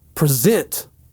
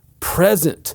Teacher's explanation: This is a 2-syllable word and the second syllable is the one that's stressed